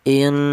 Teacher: Jadi cara bacanya nun ini apabila nun itu berupa nun yang bertasdid itu didengungkan ya panjangnya dengung yaitu dua harakat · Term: ghunah